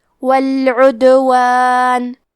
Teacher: دال بھی حروف القلقلہ میں سے ہے تو ہم یہ حرف کو ہلاتے ہوئے یہ کلمہ کو پڑھیں گے